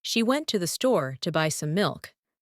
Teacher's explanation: The words went store, buy, and milk are stressed. The rest are spoken quickly and softly.